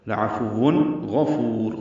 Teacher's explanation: تنوین کے بعد غین ہے، اظہار ہوگا